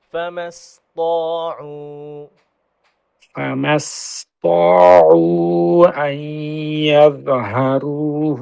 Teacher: সিন আরো পাতলা করেন যেন তয়ের মতো মোটা না আসে।